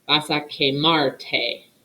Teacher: when you add the te, it doesn't end with an R anymore. And it's the verbal stress is still on the second to last syllable